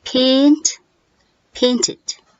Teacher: ed is read as id, making an extra syllable